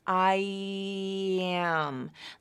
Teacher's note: there's a little Y sound in there as you transition from the I vowel to the next vowel